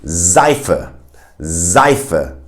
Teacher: mainly when the S is in the beginning of the word, it will be pronounced as a Z sound. For instance, in Seife, Seife, which is soap in German, you can literally hear a Z sound.